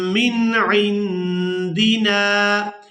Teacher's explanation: नून साकिन पर इख्फा करेंगे, यानी नून की आवाज़ को नाक में छुपा कर अदा करेंगे।